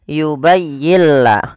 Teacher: lam maka Apabila ada suara Maaf ada nun mati bertemu lam suara nunnya kita hilangkan dan kita masukkan langsung kepada huruf lamnya sehingga yubayilla dan lam di sini dituliskan dengan tanda tasdid karena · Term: idgham